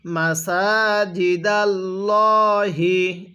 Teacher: আল্লাহ শব্দের লামের পূর্বের হরফের উপরে যদি এরকম জবর থাকে, ওই আল্লাহ শব্দের লামটাকে মোটা করে পড়তে হবে। তো এখানে আল্লাহ শব্দের লামের পূর্বে জবর আছে, এই জন্য আমরা এই লামটাকে মোটা করে পড়ছি।